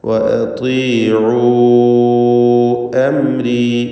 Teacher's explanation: അംരി എന്ന പദത്തിൽ സാക്കിനത്തായ മീമിനെ ഇൽഹാർ ഷഫവി നൽകി മണിക്കാതെ വെളിവാക്കേണ്ടതാണ്